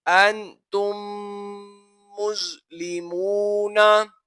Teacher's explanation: मीम साकिन के बाद दूसरी मीम आ रही है, यहाँ पर गुन्ना किया जाएगा क्योंकि यहाँ पर इदगाम शफवी हो रहा है।